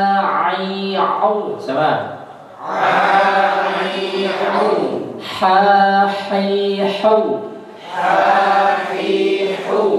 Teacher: Kemudian tenggorokan tengah itu ain dan ha.